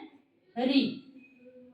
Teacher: मूर्धन्य स्वर में कौन सा था, जैसे ऋतु ऋषाणा मूर्धा, तो यानी री का उच्चारण है वो मूर्धा से होता है। तो मूर्धन्य स्वर हमारा कौन सा है, री।